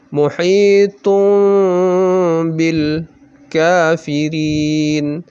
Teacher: Tidak dibaca tun, tetapi dibaca tum. Ya, langsung diganti menjadi mim. Didengungkan 2 rakaat, kemudian dibaca sedikit samar. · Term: iklab